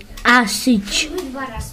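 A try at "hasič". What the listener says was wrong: Там же первое не А.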